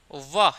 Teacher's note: दांतों के और होठों के सहयोग से ही बोला जा सकता है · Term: दंतोष्ठ